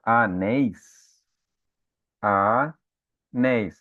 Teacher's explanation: vocês percebem que a última sílaba é a sílaba tônica. É a palavra oxítona.